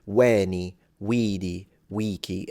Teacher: all three vowels should be long but I would lengthen them in ecclesiastical Latin too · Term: correct long vowels